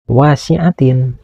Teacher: ada huruf wau yang berbaris fathah menghadapi huruf alif mati. Ini dinamakan mad thobi'i yang harus dibaca panjang panjang bacaannya dua harakat.